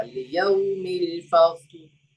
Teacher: फस्ल में लाम पे कलकला नहीं होगा